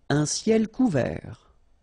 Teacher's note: Final T not pronounced.